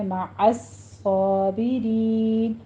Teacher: مع عین وسط حلق سے ادا کرتے ہوئے آگے صاد کے اوپر زور سے آپ نے پریس کرنا ہے، تشدید ہے، سختی کے ساتھ پڑھنا ہے، اور صاد کو بھی پر کر دینا ہے، اوپر فتح قائمہ ادا کرنی ہے، مع الصابرین، رین میں را باریک پڑی جائے گی، آگے یا مدہ ہے اور مد عارض وقفی کر دیں گے، 6 کاؤنٹ کرنا ہے۔